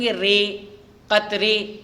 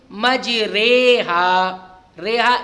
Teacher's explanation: ری کو رے سے جھکا دیا آپ نے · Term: امالہ